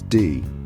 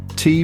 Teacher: D is voiced T is voiceless